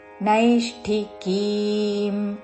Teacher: ముర్ధన్య షకి మహాప్రాణక్షము ఠవత్తు నైష్టికీం కీ దీర్ఘము